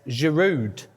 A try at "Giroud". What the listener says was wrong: It's a silent D, actually, but yeah, you get the point.